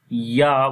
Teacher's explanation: Ya, we long here due to standing fatha on it, and also the mad sign is coming. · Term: madde munfasil